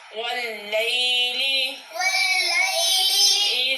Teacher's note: یہ یا لین ہے، یا ساکن سے پہلے جب زبر ہو تو وہ یا لین ہوتی ہے، یا لین کو بغیر کھینچے بغیر جھٹکے کے ادا کرتے ہیں